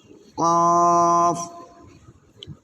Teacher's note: জিহ্বার গোড়া তার বরাবর উপরের তালুর সঙ্গে লাগাইয়া দুই নুক্তা ওয়ালা কফ